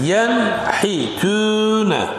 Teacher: There is a Nun Sakin, and then next letter is Ha. We pronounce it clearly. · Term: Izhar